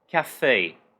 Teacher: a pronúncia fica sempre com o som de EI nessas palavras francesas, de escrita francesa